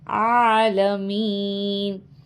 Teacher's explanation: عین کے اوپر کھڑا زبر ہے. کھڑا زبر جب ہوتا ہے ہم تھوڑا کھینچ کے پڑھتے ہیں